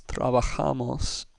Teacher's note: We look at it, we see that it ends with S, and if we know that our rule says words that end with S have the next to last syllable stressed, then we know that the stress is going to be on the A. Therefore, our word is trabajamos, with the ja syllable getting the emphasis. It's not trabajamos, it's not trabajamos, it's not trabajamos, it's trabajamos.